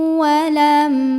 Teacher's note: mim sukun nya ini kita bunyikan dengan jelas bunyi asalnya itu bunyi m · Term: izhar syafawi